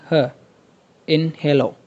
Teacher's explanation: ह एक ऐसा साउंड है जो कि तब प्रोड्यूस होता है जब कोई भी आर्टिकुलेटर या फिर स्पीच ऑर्गन एयर को ब्लॉक नहीं करता · last comes the glottal, my favourite one. There are the sounds produced without articulators but produced by air passing from the wind pipe through the vocal cords